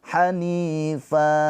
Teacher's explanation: Jadi ini namanya mad iwad. Hanifa panjang 2 harokat ya, jangan panjang-panjang